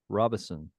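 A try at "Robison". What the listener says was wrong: There's no N. It's not Robinson. No, there's no N in Robinson in the middle.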